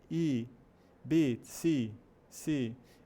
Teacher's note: Não é o i que a gente fala em português, I, mas é entre o I e o e.